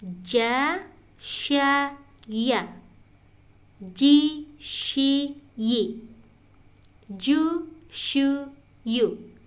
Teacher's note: apapun harokatnya, tetap posisinya hurufnya itu berasal suaranya dari kalau kita tempelkan lidah tengah ke atas